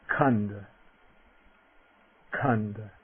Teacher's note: the voiceless aspirate, K. A little puff of air